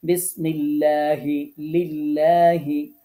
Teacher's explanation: আল্লাহ শব্দের লামকে পাতলা বা চিকন করে পড়া · আল্লাহ শব্দের লামের পূর্বের হরফে যখন জের দিয়ে পড়া হয়, তখন লাম হরফটিকে বারিক বা চিকন করে পড়তে হয়, তখন লা উচ্চারিত হবে।